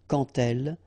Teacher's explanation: So like that, quand elle, all right, same rule here. Remember, when you will have this d, you will phonetically pronounce it like t